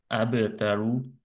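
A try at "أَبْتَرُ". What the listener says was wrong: এটা আরেকটু সামনে যাবে ভাই, আপনার টাংটা আরেকটু সামনের দিকে যাবে, হ্যাঁ।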